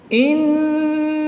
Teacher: نون مشدد میں ہمیشہ غنہ ہوتا ہے تو یہاں پر ہم غنہ آنی کر کے پڑھیں گے